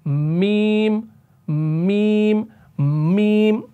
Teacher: रहा है ना जो नीचे से एक एयरफ्लो आ रहा है वो एयरफ्लो आपका नाक से भी निकल रहा है यानी नाक से भी एक वाइब्रेशन वाली साउंड हो रही है आपके वोकल कॉर्ड्स तो बज रहे हैं जैसे मीम मीम और · नाक के बांसे से भी आपका एयर फ्लो पास हो रहा है, वाइब्रेशन की सूरत में, आवाज की सूरत में, और उस सूरत में आपका मीम अदा होता है।